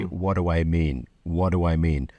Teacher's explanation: even with a native English speaker from the UK that uses glottal stops, they will tend to have a voiced D